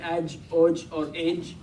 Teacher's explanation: Jim is a letter of qalqala, which means we're going to add a little movement to it as well